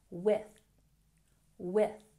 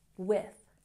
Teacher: We have the TH sound in with, so make sure you're putting your tongue between your teeth.